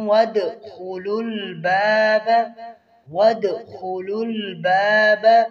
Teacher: یہاں پر دوسرے درجے کا قلقلہ ہے اور خوا کو پر پڑھیں گے